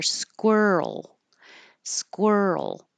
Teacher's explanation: hold your tongue in the L position and make the L noise for a little longer duration than you think you need to so that the L can be heard